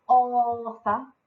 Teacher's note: So author, I stressed the bit at the beginning.